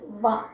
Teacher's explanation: വ എന്ന് പറയുമ്പോൾ വ നമ്മുടെ നമ്മുടെ പല്ല് പിന്നെ ഓഷ്ട എന്തെന്നാണ് ചുണ്ട് പല്ലിന്റെയും ചുണ്ടിന്റെയും സഹായത്തോട് ഉച്ചരിക്കുന്നത് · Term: ദന്തോഷ്ടഹ